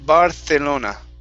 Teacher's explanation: especially from people from spain they will say barcelona and they will use a th sound